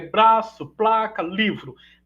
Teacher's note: a primeira consoante vai ser sempre uma oclusiva por exemplo B de braço P de placa ou então vai ser uma fricativa por exemplo V de livro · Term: obstruem primeiro lugar